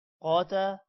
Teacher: قوف کے بعد الف ہے لمبا ہوگا. قوف موٹا بھی ہوگا. تا بھی لمبا ہوگا.